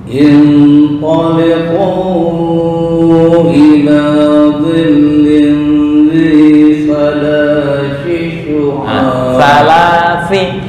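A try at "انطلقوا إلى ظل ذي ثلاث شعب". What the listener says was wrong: Salasi syu'ab. Bukan sya. Salasi syu'ab. Syu'ab. Memadukan antara sa langsung ke shin. Salasi syu'ab. Salasi syu'ab.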